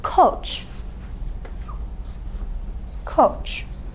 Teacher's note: look at the vowel in our only and final syllable okay it's back it's rounded you round your lips when you say o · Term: back rounded vowel